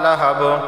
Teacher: با حروف قلقلہ میں سے ہے، آواز مخرج سے ٹکرائے گی